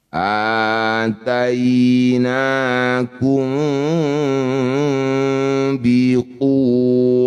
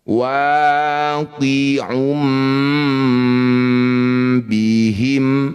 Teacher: Bunyi mim dengungkan 2 harokat, posisi bibir rapat tapi masih ada celah untuk bersiap bunyikan ba. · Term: ikhfa syafawi